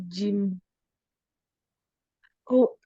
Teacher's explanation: Tengah lidah bertemu dengan langit-langit. Iya, dekat langit-langit tengah ya.